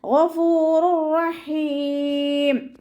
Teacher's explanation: തെൻവീനിന് ശേഷം ഇദ്ആം ബിലാഗുനയുടെ അക്ഷരമായിട്ടുള്ള റോ വന്നിട്ടുണ്ട്. തെൻവീനിലുള്ള നൂനിനെ നമ്മൾ റോയിലേക്ക് ലയിപ്പിക്കണം, പക്ഷേ ഒന്ന കൊടുക്കാതെ ഊതുക, മണിക്കാതെ ഊതുക കേട്ടോ. ഗഫൂറുർ റഹീം, ഗഫൂറുർ റഹീം എന്ന് പറഞ്ഞിട്ട് മണിക്കരുത്, തെറ്റാണ്.